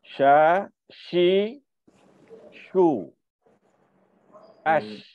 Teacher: Bila tak ada dalam bahasa Jawi, bahasa Melayu kita tak ada, maknanya kita nak kena arabkan lidah kita untuk shin. Bagi sifat tafasyi ni lebih sikit, bagi ada tersembur, terhembur sikit.